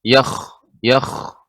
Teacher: hikkahnya garukannya harus lebih banyak